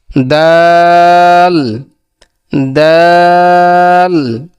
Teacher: দালের উচ্চারণ হলো যে জিহ্বার আগাম সামনে উপরের দুই দাঁতের গোড়ার সঙ্গে লাগাইয়া।